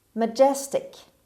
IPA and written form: məˈdʒestɪk (majestic)